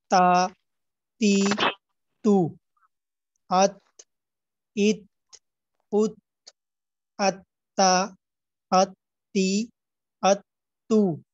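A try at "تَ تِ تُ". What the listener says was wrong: আচ্ছা, ঠিক আছে, মাশাআল্লাহ।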